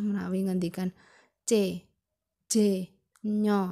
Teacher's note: jika daun lidah dan langit-langit keras atau yang disebut dengan palatal itu adalah konsonan c c nya panjenengan rasakan c c Nah itu bertemunya daun lidah